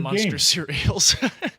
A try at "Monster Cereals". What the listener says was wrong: Monster Cereals, not Munster Cereals. You said Munster.